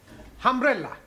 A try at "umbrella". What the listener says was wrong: Yes, good, but not humbrella, umbrella.